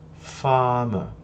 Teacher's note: em inglês britânico dificilmente se pronunciam esses R's, só em alguns casos muito específicos se pronuncia esse R de forma rolada, ou seja, fazendo E uma palavra como essa é um dos melhores exemplos que eu posso te dar disso.